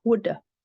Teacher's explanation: Whether you are learning American or British English, have usually reduced to v sound, with, or schwa, v, would have. It's reduced to just a schwa sound, would have.